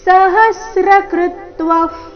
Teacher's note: ನಮಸ್ತೆಸ್ತು ಸಹಸ್ರಕೃತ್ವಃ ಸಹಸ್ರಕೃತ್ವಃ ಹ ಮತ್ತೆ ಕೃ ಮೇಲೆ ಆಘಾತ ವಿಸರ್ಗದ ಉಚ್ಚಾರಣೆ ಅರ್ಧ ಫ ರೀತಿ